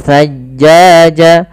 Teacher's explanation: di sini maanya kita panjangkan sepanjang empat harakat atau l harakat karena di sini kita namakan dengan mad wajib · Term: mad wajib muttasil